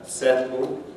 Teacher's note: in that way a similar effect is lateral release and here the alveolar closure for the l is released by lowering the sides of the tongue